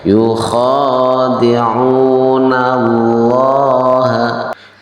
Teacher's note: Yukhadi'una allaha ya, lafdzul jalalah diawali dengan huruf yang sebelumnya adalah berharokat fathah, maka lam jalalanya dibaca dengan tafhim ya. Cara membaca tafhim itu adalah lamnya berbunyi lo.